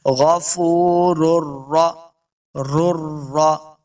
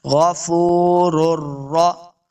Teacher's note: دونوں را سیم پڑھے جائیں گے، ایک ہی ساؤنڈ ہے